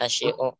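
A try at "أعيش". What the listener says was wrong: bukan asyi'u, a'ishu a'ishu nahnu na'ishu gitu, jangan kebalik ya, asyi'u jadinya itu sin dulu, harusnya ain dulu.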